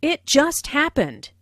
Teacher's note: Notice the stress on just, which emphasizes that the accident happened very, very recently.